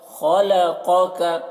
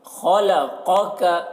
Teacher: یہ خا کو پر پڑھتے ہیں اور یہ قاف کو اور اس کاف کو باریک پڑھتے ہیں